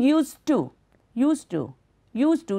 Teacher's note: So when alone in this sentence, the pronunciation of the final sound d, d in used. However, when it is part of the phrase used to, the final d sound is dropped. You are not going to say used to, used to, used to.